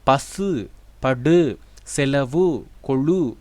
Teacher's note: இறுதியில் உள்ள உகரத்துக்கு முழு ஓசை உள்ளது அதாவது ஒரு மாத்திரை அளவிலே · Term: முற்றியல் உகரம்